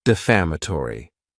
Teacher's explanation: this word has five syllables and the stress is on that second syllable